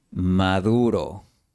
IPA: ma'ðu.ɾo